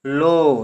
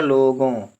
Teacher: ओ आवाज आ रही है। और कुछ कुछ नाक से आ रही है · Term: अनुस्वार बिंदु